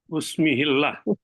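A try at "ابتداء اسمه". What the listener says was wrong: Ya, ibtida'us mi langsung. Jangan pakai u lagi. Itu yang alif di ismi itu yang hamzah wasal. Jadi ibtida'us langsung sekali. Ya, ibtida'us mihi ada.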